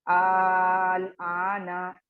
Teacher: दो हुर्फे मद्दा की तरह दो काउंट्स देकर अदा करेंगे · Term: मद्दे असली